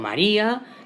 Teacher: la fuerza cae en la I, que es la vocal cerrada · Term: hiato